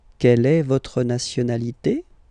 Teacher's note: don't be afraid to go like, yoop, and raise a little bit at the end.